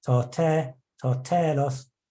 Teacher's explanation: the acute accents, such as the one on telos, meant that the syllable took a rise in pitch of up to a fifth